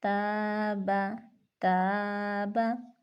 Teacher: یہاں پہ الف ہے، الف کے ما قبل تا ہے اور تا باریک حرف ہے تو ہم الف کو باریک پڑھیں گے